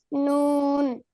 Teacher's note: 9 নম্বর জিহ্বার আগা তার বরাবর উপরে তালুর সঙ্গে লাগাইয়া নুন